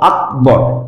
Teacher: ক এর পরে কিন্তু অটা উচ্চারণ করছি না, সুতরাং সেখানে আমাকে হসন্ত ক ব্যবহার করতে হবে এভাবে আকবর।